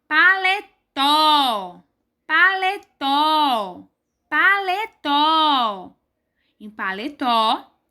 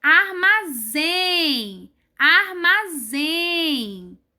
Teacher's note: quando a sílaba mais forte da palavra está em último lugar e chamamos isso de oxítona